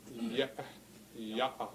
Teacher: on that you have voiced chords or a voice box and it's possible to shut that voice box as the air comes out through it it's like a little bit of no sound you hear between those vowels yeah yeah that's the glottal stop the globe will stop so